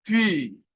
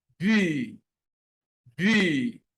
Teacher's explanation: when you pronounce B, there is a major vibration.